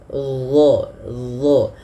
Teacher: Kemudian pada lafal dha, huruf dha ini dia makhrajnya sama dengan huruf dzal, akan tetapi yang membedakan adalah huruf dha ini harus ditebalkan. Dha, pangkal lidah kita naik karena ada salah satu sifatnya huruf isti'la